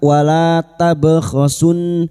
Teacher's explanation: lam alif dua harakat kita panjangkan